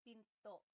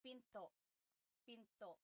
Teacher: Do you hear the glottal stop when I say pinto?